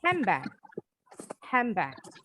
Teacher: Bacanya bukan handbag, nggak salah sih bilang handbag, but to sound more like a native English speaker, pronounce it as handbag. Bunyinya jadi m.